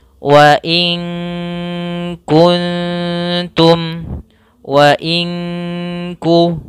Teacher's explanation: kita samarkan ke Kaf kemudian ditahan gunahnya · Kalau izhar suaranya jelas, kalau idgham memasukkan, maka kita samarkan nunnya ke kaf sambil kita samarkan kepada makhraj daripada huruf kaf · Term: ikhfa